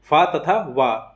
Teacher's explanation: दंतोष्ठ से उच्चारित होने वाले व्यंजन है